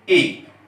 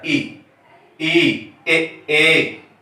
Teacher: यदि जीभ का अग्रभाग काम करता है, किसी वर्ण को उच्चारण करने में जीभ का अग्रभाग काम करता है, तो वह अग्रस्वर होता है